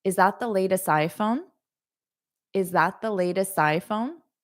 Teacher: notice I don't really link that T to the I. You hear more of an S.